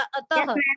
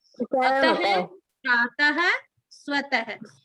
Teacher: विसर्ग दो बिंदु की तरह लगाया जाता है और हल्के से है के रूप में इसका उच्चारण होता है